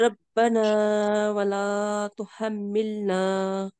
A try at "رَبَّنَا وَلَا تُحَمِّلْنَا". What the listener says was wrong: با کا مشدد جو ہے اس کو آپ تھوڑا سا سختی سے پڑھیں گی اور میم پہ غنہ کریں گی.